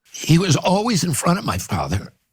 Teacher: his voice is really strained, and he has a condition called Spasmodic Dysphonia